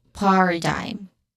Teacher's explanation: First syllable is stressed here, par, which has a short ah sound, and then which is a schwa sound.